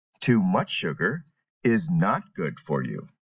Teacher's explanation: in the negative sense emphasize the word not more than good